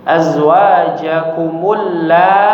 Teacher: Lanya dipanjangkan lima harakat. I-nya dua harakat saja.